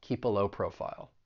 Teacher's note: We can link that consonant sound in keep with that schwa sound in the article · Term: linking